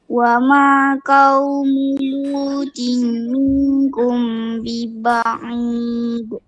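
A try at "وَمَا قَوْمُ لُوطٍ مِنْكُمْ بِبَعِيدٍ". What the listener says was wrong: ni baca kaf bukan kau lagi sekali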